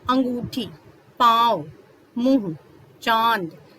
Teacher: उच्चारण करते समय जो आवाज है वो नाक से निकलती है। जैसे कि अंगूठी, पांव, मुंह, चांद, तो ये सब कहाँ से इसकी जो ध्वनि है, इसकी जो आवाज है वो कहाँ से निकल रही है, नाक से निकल रही है। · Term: अनुनासिक